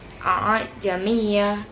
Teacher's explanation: terdapat hukum bacaan tasil karena membaca antara hamzah dan alif. Tasil dibaca dengan meringankan bacaan hamzah yang kedua.